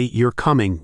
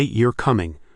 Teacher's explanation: If you say you're coming with a rising intonation, it's a question. But if you say you're coming with a falling intonation, it's a statement.